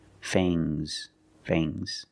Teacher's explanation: And the S is making a zebra sound, Z, but it's soft.